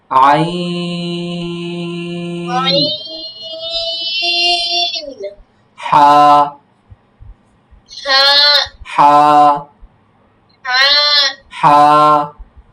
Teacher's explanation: কণ্ঠনালীর মধ্যখান হইতে উচ্চারিত হয়